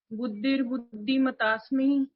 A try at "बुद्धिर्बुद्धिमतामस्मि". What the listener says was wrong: मतामस्मि मतास्मि नहीं है, मतामस्मि